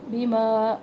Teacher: بیما مد ہے یہاں پہ، مد منفصل، 3 الف کے برابر